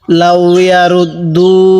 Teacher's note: র লাগবে এই দালের সাথে, রুত দাল ওয়াও পেশ দু। এখানে এক আলিফ টান দিব, পেশের বামে ওয়াও সাকিন থাকলে সেখানে আমাদের এক আলিফ টানতে হয়।